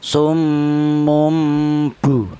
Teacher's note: Jadi tanwinnya diganti dengan huruf mim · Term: iqlab